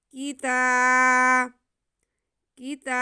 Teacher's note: آگے تا پہ کھڑا زبر ہے، تا کو ہم ایک الف کے برابر کھینچیں گے